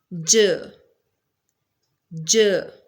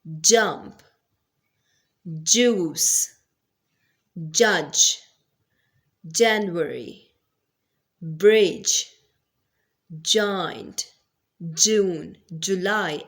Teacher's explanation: Next and the last affricate sound is j, j, which is a voice sound.